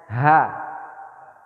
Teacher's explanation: Biasa ya, tebal ya. Ha. Kayak ada terasa di dekat dada juga. Ha. Nah, kerongkongan paling bawah.